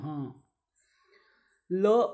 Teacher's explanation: यानी कि हमारी जीभ जो है वह दांत को स्पर्श करती है, इसके कारण उसे बोलते हैं दंत्य।